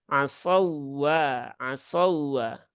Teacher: jadi wau yang bertasdid itu harus dibaca dengan nabr